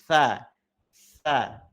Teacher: ujung lidah bertemu dengan ujung gigi seri atas. Nah, di sini baru pelafalan huruf tsa ujung lidahnya ditempelkan dengan gigi seri atas. · ujung lidahnya ya dia terlihat karena dia menempel pada gigi seri atasnya. Jadi tidak pada bagian belakang sini ya Bapak Ibu.